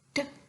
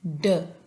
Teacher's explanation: जब टंग टिप या टंग ब्लेड जो है उसको टच करती है और हम साउंड प्रोड्यूस करते हैं ट एंड ड, ठीक है। ठ जो है हमारे पास वॉइसलेस है एंड ड जो हमारे पास है वॉइस साउंड